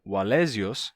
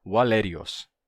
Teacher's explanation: passou por um rotacismo, em que esse som de Z se tornou um som de R. Assim, Wallesios se tornou Wallerios.